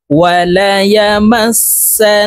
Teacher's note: নুন জবর না, কাফ মিম পেশ কুম, এই কাফ তাসদিদওয়ালা মিমের সাথে গুন্নার সহিত পড়তে হবে, মাঝখানে জজমওয়ালা মিম বাদ পড়ে যাবে।